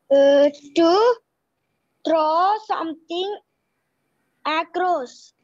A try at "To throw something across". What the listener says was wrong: To throw, not draw. Throw. To throw something across. Say properly. To throw.